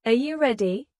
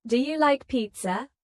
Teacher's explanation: when a native speaker asks a yes or no question like, Are you ready? the pitch of their voice goes up at the end